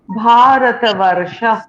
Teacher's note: রেফ আছে, কারণ তারপরে একটা যুক্ত বর্ণ রয়েছে, র এবং মূর্ধন্য স এর একটা যুক্ত বর্ণ রয়েছে, তাই তার আগের বর্ণটি, সেটা হচ্ছে ওয়া, সেটা দীর্ঘ উচ্চারণ হলো